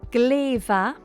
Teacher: In gleva, very good, the M softens to a V. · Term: lenition